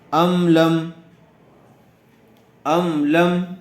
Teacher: میم ساکن کے بعد لام آئی ہوئی ہے، اس لیے اظہار شفوی ہوگا، میم کو ظاہر کر کے پڑھیں گے